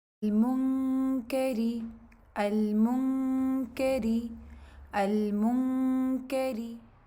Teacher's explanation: اس میں غنہ کرنا ہے، نون کو چھپانا ہے، اور غنے کے دوران کاف کا مخرج ٹچ ہو رہا ہوگا، اور جیسے ہی غنہ اوور ہوگا اس کے ساتھ ہی آپ لوگ کاف کی ادائیگی تھوڑا سا مزید پریس کر کے اس کی ادائیگی کر لیں گے.